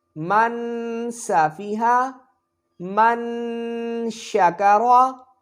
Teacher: اخفا ہوگا، یعنی کہ غنہ کر کے پڑھیں گے